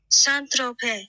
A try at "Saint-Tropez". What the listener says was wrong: I heard Saint Tropez. You're not even pronouncing the Z.